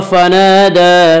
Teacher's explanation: फनादा दाल के ऊपर खड़ा ज़बर है, खड़ा ज़बर को 1 अलिफ के बराबर खींच कर पढ़ेंगे · फहशर फनादा, फनादा अलिफ मद्दा, अलिफ हमेशा मद्दा होता है, अलिफ से पहले ज़बर होता है। अलिफ मद्दा को 1 अलिफ के बराबर खींच कर पढ़ेंगे